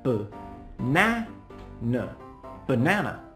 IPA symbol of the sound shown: ə